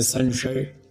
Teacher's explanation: संशय शब्द में स पहले दंत है। फिर तालव्य है।